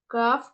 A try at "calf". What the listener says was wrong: It's not calf. It's calf. You should not pronounce L.